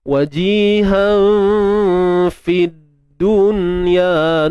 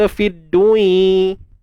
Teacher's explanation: Nun mati bertemu ya. Nun mati bertemu ya dalam satu kalimah ni tuan-puan, dia takkan jadi idgham bi gunnah.